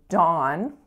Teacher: dawn with our vowel ah, which is that low back vowel.